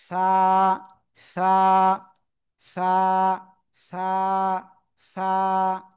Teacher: উপরে দুই দাঁতের আগায় লাগান, লাগিয়ে হালকা বাতাস বের করেন, যেটা হাতে অনুভব হবে বাতাস।